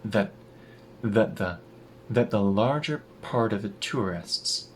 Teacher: the T at the end of that turns into a glottal stop, and we reduce the vowel in that. It turns into that the larger part of the tourists, the T in part turns into a tap.